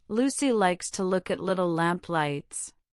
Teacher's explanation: the tip of your tongue must press firmly against the alveolar ridge, which is that bumpy area just behind your upper front teeth. Hold it there as you vocalize the sound. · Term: light L